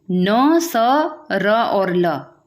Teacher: न, स, र और ल, ये चार अक्षर दंत मूल से उच्चारित होने वाली ध्वनियाँ हैं